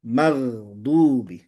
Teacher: Tapi jangan juga syiddah, magdubi, nggak, magdubi. Jadi ada mengalir huruf ghainnya sebelum masuk ke huruf dotnya.